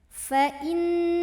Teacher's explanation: Kemudian di sini ada alif lam, namanya alif lam syamsiyah karena ada alif lam ta'rif ketemu huruf syamsiyah yaitu lam. Maka alif lam ini tidak perlu dibaca. Kita baca idghamkan atau masukkan ke lam berikutnya.